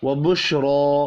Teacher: रा खड़ी ज़बर की वजह से पुर भी पढ़ी जाएगी और एक अलिफ के बराबर खींच कर भी पढ़ेंगे।